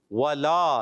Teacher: ولا میں واو پر زبر ہے، کھینچنا نہیں، لا کو کھینچنا ہے